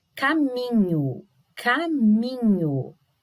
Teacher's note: é o mi mesmo a nossa sílaba tônica